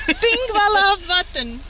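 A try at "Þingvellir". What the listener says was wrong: Pingvellir. The P-looking thing is a TH. Thingvellir.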